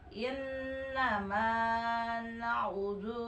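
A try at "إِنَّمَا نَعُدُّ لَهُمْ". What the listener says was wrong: Tahan deui, tekan. Na'uddu. Tong dipanjangkeun. Na'uddu lahum.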